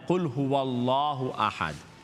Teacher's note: اللہ کا نام فل ماؤتھ ہے، قل هو اللہ احد، قل هو اللہ.